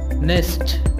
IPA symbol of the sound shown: n